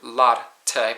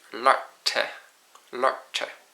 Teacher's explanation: you roll your tongue, instead of having your R sound up in the front, ar, you have roll back your tongue when it's next to a T, and it's art.